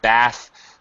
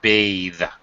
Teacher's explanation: bathe it has an e on the end and the bath the voiceless th becomes a voiced th